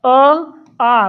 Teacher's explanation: गोलाकार नहीं होते जो बचे हुए हैं अ आ कहेंगे आ आ में मुह बड़ा होता है आ गोल नहीं होता है